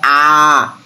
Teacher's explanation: মৌলিক স্বরধ্বনি উচ্চারণ করার সময় মুখটা একদম পুরোপুরি খোলা থাকবে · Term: বিবৃত